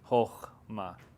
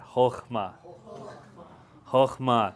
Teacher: notice too that there's actually two gutturals in a row.